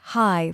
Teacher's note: For example, when you greet someone, don't just say hi flatly. Say hi with a little rise in your voice. It instantly sounds warmer and more open.